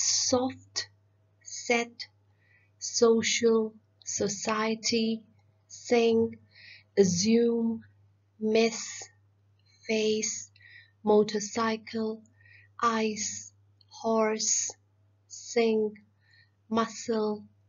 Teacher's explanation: a voiceless sound so let's take a look at the video s is a sound which comes from the front part of the tongue and it touches your alveolar ridge so i know there are people who have problems in taking